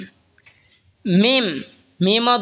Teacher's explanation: মিমও দুই ঠোঁট হইতে উচ্চারণ হবে, বা যেখান থেকে উচ্চারণ হয়েছে সেখান থেকে মিমও উচ্চারণ হবে।